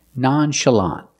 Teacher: the last syllable is the open ah sound like in hot and stop together nonchalant stress the first and third syllable that's the first